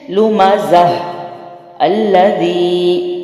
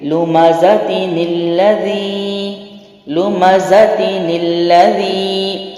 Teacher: وقف کی صورت، میں نے نون نہیں پڑھا